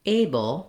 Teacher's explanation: looking at the word able we have first syllable stress and the a uh letter A says its name so it